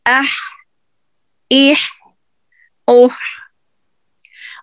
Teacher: तो गले के हलक के दरमियानी हिस्से से आप देखिए हा अदा होता है। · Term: हुरूफ हल्की